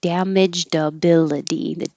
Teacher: damaged ability the d will connect to the a